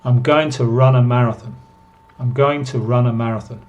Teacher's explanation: se reducen la pronunciación de to y suena como ta